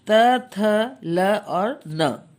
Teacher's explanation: इनके उच्चारण में हमारी जबान ऊपर वाले दांत को छूती है